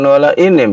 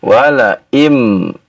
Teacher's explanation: Bukan wala inim ya wala im idgham ya nun kepada huruf mim